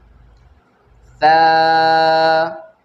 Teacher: ثا زبان باہر نکال کر ادا کریں گے